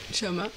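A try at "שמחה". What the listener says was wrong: Non, ce n'est pas Shama. Alors, j'ai souligné le H. Ça ressemble à Shama, ça ressemble à entendre, mais ça se prononce comme un R. C'est Shamar.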